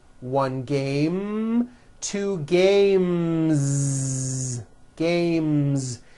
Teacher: when you add an S, the S should also be voiced.